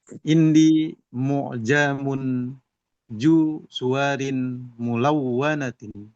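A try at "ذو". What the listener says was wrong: Zu bukan ju. Zu.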